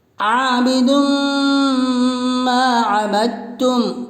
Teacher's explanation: وَلَا أَنَا عَابِدٌ مَا عَبَدتُّمْ، دال کے اوپر دوبش کی تنوین ہے، دوبش کی تنوین کے بعد حروف ادغام کے 6 حرفوں میں سے میم ہے، اس لیے دوبش کی تنوین کا میم میں ادغام مع الغنہ ہوگا، یعنی غنہ کے ساتھ ملا کر پڑھیں گے۔ ادغام مع الغنہ کا دوسرا نام ادغام ناقص بھی ہے، یعنی ادغام مع الغنہ کو ادغام ناقص بھی کہتے ہیں۔